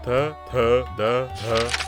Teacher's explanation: ಮುಂದೆ ನಾಲಿಗೆ ಹಲ್ಲನ್ನು ಮುಟ್ಟಿದಾಗ ದಂತ್ಯ ಡೆಂಟಲ್ ಎಂಬ ಪದಗಳು ಹುಟ್ಟುತ್ತವೆ